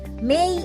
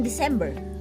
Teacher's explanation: You will probably notice that the lips move for M and that the tip of the tongue moves for D.